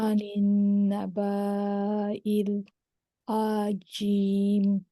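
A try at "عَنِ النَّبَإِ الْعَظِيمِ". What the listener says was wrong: আদিম, কিন্তু আনিন নাবা টান দিলেন কেন? আলিফ আছে বলে? না, নিচে তো এটা হামজা দেখেন। আনিন আনিন নুনে সাদ্দা আছে। আনিন নাবাইল, আনিন নাবাইল আযীম।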